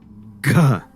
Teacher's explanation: Ga now is both voiced and aspirated as a Velar. There's vibration, there's a puff of air, point of contact is the throat.